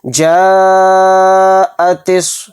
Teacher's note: اس مد متصل کو ہم 4 الف کی مقدار کھینچ کر پڑھیں گے۔